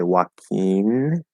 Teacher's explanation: using the front N and an E sound, which is how I speak